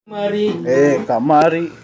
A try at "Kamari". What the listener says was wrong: Kamari enggak, nadana beda.